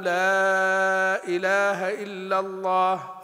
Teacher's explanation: فنقصر في المنفصل ونمد في التعظيم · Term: المد التعظيم